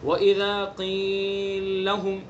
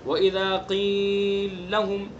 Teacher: پہلے لام کو ساکن کر کے دوسرے لام کے اندر ادغام کر دیا جائے گا. وَإِذَا قِيلَ لَهُمْ، اس طرح پڑھا جائے گا یہ وَإِذَا قِيلَ لَهُمْ، یعنی پہلے حرف کو پہلے لام کو ساکن کر کے دوسرے لام میں ادغام کر دیا جائے گا. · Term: ادغام کبیر